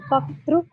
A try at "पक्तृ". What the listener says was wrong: Not Bhakta, it is Paktru. Pa.